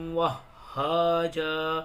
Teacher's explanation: ہا کے اندر تشدید ہے، اس کو تھوڑا سختی سے پڑھیں